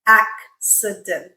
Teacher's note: both the k and the s sounds, one after the other